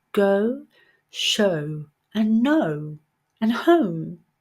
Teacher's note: good so again it's a short sound what we do is we start with the uh sound and finish with the o sound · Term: dip thong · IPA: /əʊ/